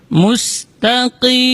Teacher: huruf qaf dibaca dari aqsal lisan, di pangkal lidah